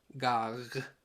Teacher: the first G is plosive the second is fricative